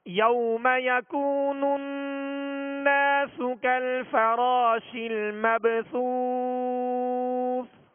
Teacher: با ساکن ہے، حروف قلقلہ میں سے ہے، قلقلہ کریں گے یعنی آواز میں جنبش ہوگی، آواز لوٹتی ہوئی آئے گی. مبثوث واو مدہ کے بعد سکون عارض ہے، یعنی وقف کی صورت میں دوسرے سا کو ہم نے ساکن کیا اور سکون عارض آیا، لہذا یہاں مد عارض ہوگی.